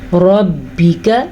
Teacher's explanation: یہ را ہم پر پڑھیں گے کیونکہ اس را کے اوپر زبر ہے